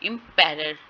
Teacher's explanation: इम पे स्ट्रेस होगा, पैरर पे स्ट्रेस नहीं होगा